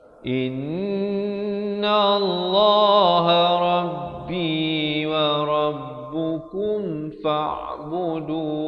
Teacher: Kum izar syafawi. Bunyi dia kum, jangan lambat.